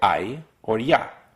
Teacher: and e a weak vowel I get either I or Y in both cases the a is the longest part and the E is really fast